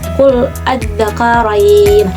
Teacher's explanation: Mad farqi itu mad badal bertemu dengan huruf tasydid. Contohnya qul adzakarain, panjangnya itu 5 harokat ya.